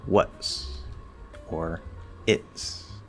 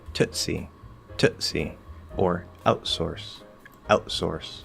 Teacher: all I did was I closed off my glottis and then I just did a regular S. Now you can also still close into the T and do the glottal close off there and then push the S through like you normally would.